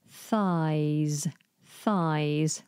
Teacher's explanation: you have a TH followed by a Z sound